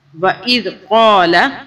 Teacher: یہ ذال سافٹلی ادا کرنا ہے، دانتوں میں زبان کو رکھیں اور تھوڑا سا باہر زبان کو